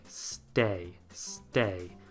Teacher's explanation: start with a word that begins with s t because again that t is usually not aspirated think of a word like stay stay remove the s sound